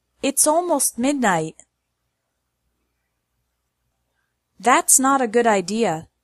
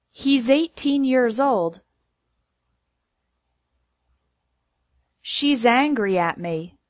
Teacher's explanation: it is pronounced Z when it follows a voiced sound where you add sound with your voice like r d m n most other consonants and all vowels · it is pronounced s when it follows an unvoiced sound that's a sound where you hear only air